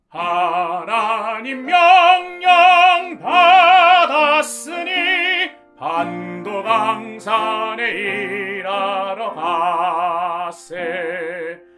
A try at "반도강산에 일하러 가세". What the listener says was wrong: 여기 마지막에 반도강산에 일하러 가세요. 이 부분도 많이 흥분하셔가지고 음정이 많이 틀리는데 파솔랄라시솔 항상 음정에 주의해 주셔야 됩니다.